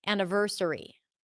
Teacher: the schwa is between the n and the v